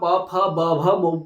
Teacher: इसी प्रकार जब भी आप प फ ब भ बोलोगे, तो आपके जो होंठ है वो आपस में एक दूसरे को टच करेंगे, इन्हें बोलेंगे ओष्ठ्य, इन्हें बोलेंगे ओष्ठ्य वर्ण।